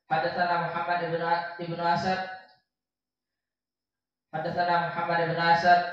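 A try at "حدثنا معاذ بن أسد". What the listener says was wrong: Muhammad Laisa Muhammad. Mu'adz.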